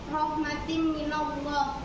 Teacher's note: di situ tanwin bertemu mim. Jadi hukum bacanya idgham bil gunnah